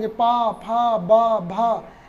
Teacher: इसी तरह से उप उपदमानिया नाम ओष्ठव, उकार, ह्रस्व उकार और दीर्घ उकार और पवर्ग, पवर्ग में पा, फा, वा, भा, मा, और उपदमानीय में कौन से वर्ण आएंगे, पा और फा, इनका उच्चारण स्थान क्या है, ओठ, क्योंकि इन वर्णों का जब हम उच्चारण करते हैं तो ओठ हमारे दोनों आपस में मिल जाते हैं। ऊ पवर्ग के वर्ण पा, फा, बा, भा, इन वर्णों का जब उच्चारण करेंगे तो ओठ मिल जाएंगे, इसीलिए इनका उच्चारण स्थान क्या हुआ, ओठ।